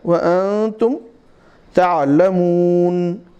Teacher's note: نون کی آواز اس میں آپ کو سنائی تو دے گی, لیکن ایسی ہونی چاہیے کہ آپ کو سننے والے کو یہ محسوس ہو کہ اس پر نون جو ہے متحرک نہیں ساکن کیا گیا ہے